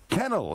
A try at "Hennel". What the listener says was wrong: Hennel with a H.